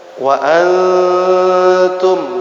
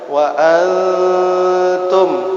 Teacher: ketika disamarkan atau didengungkan, dipangkal hidungkan, panjangnya 2 harokat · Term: ikhfa